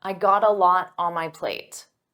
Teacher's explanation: Now, native speakers pronounce this as gotta.